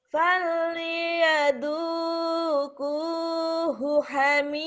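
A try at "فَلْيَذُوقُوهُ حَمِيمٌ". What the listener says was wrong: Mimnya kurang kenceng. Falyaduquhu hamim.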